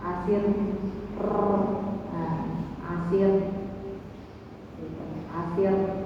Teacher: Yang penting tidak terlalu banyak takrirnya, banyak getarannya, misalnya asir, asir, asir ya.